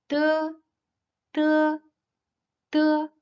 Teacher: It is an unaspirated voiceless alveolar plosive. The primary obstacle is formed by a closure made between the tip of the tongue and the upper alveolar ridge. Long air is compressed behind this closure, and then escapes with force upon release of the alveolar closure, with no vibrations of the cords.